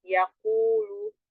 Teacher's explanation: Yaqulu di ayat 6, yaqulu huruf qaf ingat di belakang pangkal lidah bertemu dengan langit yang lembek.